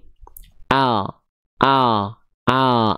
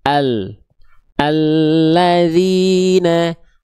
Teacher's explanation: dari tepi lidah bagian depan kiri dan kanan, keduanya menyusur sampai ke ujung lidah, kita sentuhkan ke langit-langit depan. Langit-langit atas depan. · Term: huruf lam